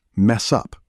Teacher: In fast speech, this links together. Mess up, almost sounding like one word